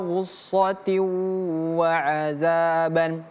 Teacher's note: Idgham itu artinya melebur. Dia tidak lagi in tapi langsung melebur menjadi huruf wau setelahnya. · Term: idgham bighunah